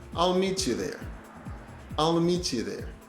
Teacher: the T and the Y sounds are assimilating. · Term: assimilation